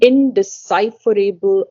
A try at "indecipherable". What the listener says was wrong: you're saying able. It's indecipherable.